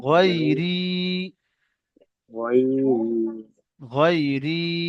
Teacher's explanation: জের এসছে, ইয়া মাদ্দা বলে। ইয়া মাদ্দাকে একালিক পরিমাণ টান দিয়ে পড়তে হয়